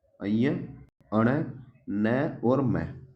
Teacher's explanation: हर वर्ग के ये नाक की सहायता से बोले जाते हैं इसीलिए इन्हें अनुनासिक व्यंजन कहते हैं